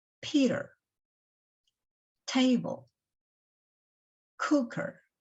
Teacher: A raised little h after a phonetic symbol indicates that the sound which it represents is strongly aspirated, that is, pronounced with an extra puff of air